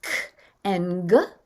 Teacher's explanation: K and g are using the back of the roof of the mouth. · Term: plosives